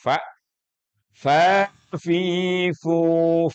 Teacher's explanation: masuk makhrajnya di mana di syafatain di bibir sama dengan ba wau Fa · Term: huruf bibir